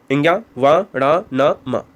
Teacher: नासिक के व्यंजन वे व्यंजन होते हैं जो नाक के द्वारा उच्चारित किए जाते हैं।